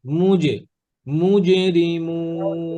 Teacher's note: আলিফুল জিমটা জিহ্বার মাঝখানে